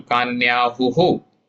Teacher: Visarga remains as visarga, pronounced as visarga, and the rhyme will match the preceding vowel.